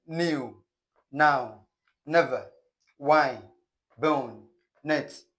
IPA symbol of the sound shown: n